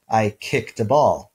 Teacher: if we have voiceless sounds at the end of a verb then we can have a voiceless alveolar stop as the past tense ending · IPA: [-t]